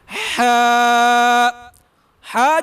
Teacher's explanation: اس کے بعد ہے ہا جو حروف ہے حروف حلقی میں سے ہے، اور یہ ہا کا حروف حلق میں سے ہی ادا ہوتا ہے